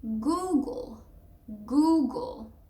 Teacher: And so you basically, the first syllable is goo, and then the second one is almost like the G and the L with no vowel at all. It's a schwa, but you can get rid of it basically.